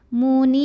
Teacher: Kemudian huruf yang disukunkannya ra. Jadi kalau berhenti nunnya panjang, boleh 2, boleh 4, boleh 6 harokat. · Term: mad arid li sukun